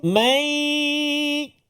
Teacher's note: Wah, ada dua dengung yang berbeza ataupun hukum yang berbeza. Pertama, nun mati bertemu dengan ya, idgham ma'al gunnah. Nun mati masuk dalam ya. Berserta dengan dengung.